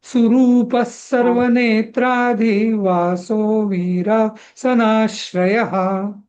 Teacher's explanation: तुम्ही रू ह्रस्व म्हटला हा, तो दीर्घ म्हणायला पाहिजे.